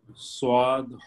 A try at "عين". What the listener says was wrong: आइन, स्वाद आइन, ये आइन है।